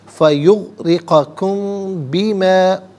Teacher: میم ساکن ہے، اس کے بعد با ہے تو میم ساکن کو غننے کے ساتھ پڑھیں گے